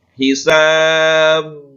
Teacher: karena dibaca waqaf, maka bacanya adalah hisab, ya, dengan pantulan yang amat kuat. Hisab, ya. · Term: qalqalah kubra